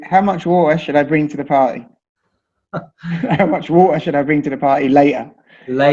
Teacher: We'll use something like what we call a glottal stop. It's not even making the T sound. It's like in the back of your throat.